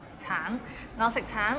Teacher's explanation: the end has a little ng, so it's a bit of nasal sound. 橙, 我食橙, I eat an orange.